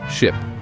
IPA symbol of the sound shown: ɪ